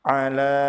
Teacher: La pada kata ala dibaca panjang 4 atau 5 harokat disebut sebagai mad jaiz munfasil karena mad tabi'i bertemu dengan hamzah setelahnya.